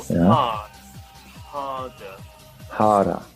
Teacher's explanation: No r sound. In British English, there is no r sound.